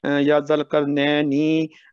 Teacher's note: را سے پہلے زبر ہے، موٹا پڑھیں گے